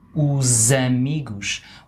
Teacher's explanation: we transform that S into a Z sound. Os amigos, which if you think, like you said, follows the rule of the S when it's in the middle of a word, followed by a vowel.